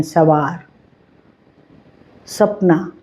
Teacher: यह तंत व्यंजन है। स दांत के साथ जीभ टच होती है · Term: दंत व्यंजन